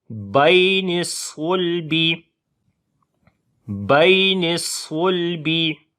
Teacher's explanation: یا لین ہے، نرم پڑھیں گے، اور صاد کو موٹا پڑھیں گے